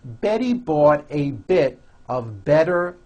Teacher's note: all the T's are pronounced as DS because they fall between vowels